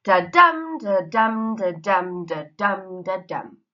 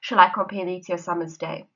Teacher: So an iambic pentameter just means that there are 5 unstressed syllables and 5 stressed syllables in a sentence or a line of poetry